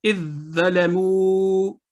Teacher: تو ہم نے ضو کی آواز کو پڑھا, زا کی آواز کو نہیں پڑھا